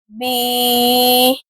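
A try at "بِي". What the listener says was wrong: بی، دیکھیں نا last میں ہا پڑھ رہے ہیں، کنٹرول کریں،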